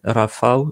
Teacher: Donc un mot qui se finit par un WE, ça forme pas une diphtongue, donc oui, le nom polonais Rafał, c'est pas une diphtongue, c'est A suivi de WE. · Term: L barré